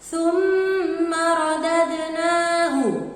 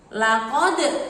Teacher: Nah, di situ ada huruf dal sukun, maka harus dibaca memantul. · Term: bacaan qalqalah